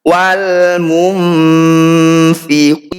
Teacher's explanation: Wi kita panjangkan 6 harokat, huruf terakhir ini kita sukun. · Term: mad arid disukun